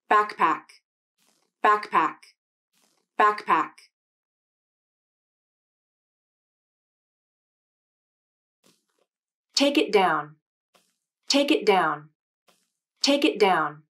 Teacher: if the next word begins with a consonant the k sound will be unreleased or have a mini release of the tongue